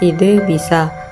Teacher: E, agak tinggi tak bulat